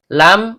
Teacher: ujung lidah bertemu dengan langit-langit bagian depan